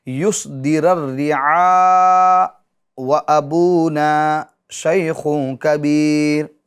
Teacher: متحرک یعنی حمزہ پر پیش ہے تو اس کو کیا کر دیں گے؟ ساکن کر دیں گے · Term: سکتہ